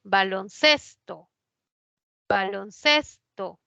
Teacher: ces es la que lleva la mayor fuerza de voz es grave termina vocal no se tilda cuando no llevan guion · cuando forma la nueva palabra la mayor fuerza de voz ya no está en balón está en ces